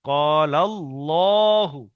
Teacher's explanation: আল্লাহ শব্দের আগে লামের উপরে জবর, আল্লাহর লাম পুর। ক্বাল আল্লাহু, এই লামটা বারিক হবে কিন্তু আল্লাহর লামটা পুরো হবে।